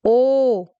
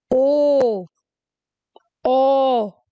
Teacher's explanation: वृतमुखी स्वर वो स्वर होंगे जिनके उच्चारण में होंठ वृत्ताकार या गोलाकार होंगे।